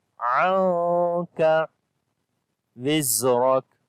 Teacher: On this Noon we hide the sound of Noon because due to Ikhfa, after the Noon Sakin the next letter is Kaf. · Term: Ikhfa sound